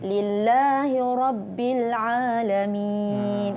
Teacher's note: Dengar bunyi ain dia tak jadi alif ya. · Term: huruf ain